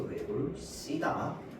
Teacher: 뒤에 조사가 나왔으니까 시옷이 넘어갈 때 어떻게 어 쌍시옷으로 발음이 되죠